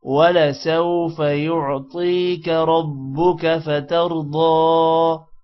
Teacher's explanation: ربک را موٹا ہوگا اور با پر شد ہے، را کو با کے ساتھ ملیں گے۔ فترضى را بھی موٹا ہوگا اور یہاں پر ضاد موٹا ہوگا جبکہ ضاد پر کھڑی زبر ہے تھوڑا سا لمبا بھی کریں گے۔